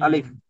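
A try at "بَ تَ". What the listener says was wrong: আলিফ নয়, এখানে যদি এরকমই থাকতো তাহলে আলিফ বলতেন। এখানে আলিফ নেই তো ভাই।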